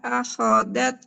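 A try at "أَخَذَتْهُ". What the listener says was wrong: Nah, akhozat, akhozat. Nah, huruf zalnya jangan jadi da, jangan akhodat. Nah, ujung lidah tempelkan ke ujung gigi seri atas.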